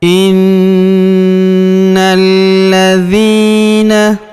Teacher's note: huruf na kita tahan dan kita tekan, serta kita dengungkan 2-3 harokat karena terdapat tanda tasydid di atasnya. Innalladzina, kemudian huruf na langsung sambung lompat ke huruf lam yang berharokat tasydid, langsung masuk ke sini, kita tahan dan tekan ya, alifnya tidak dibaca.